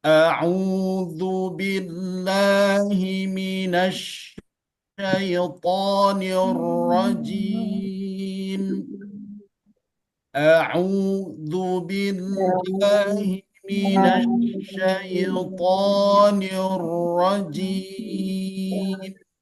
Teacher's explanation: Nirrajim, tidak boleh terlalu banyak getarannya.